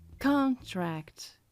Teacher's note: Em inglês, a sílaba tônica é a primeira. Contract. E eu sei disso porque eu identifiquei o tracinho vertical que me disse que con se fala mais alto.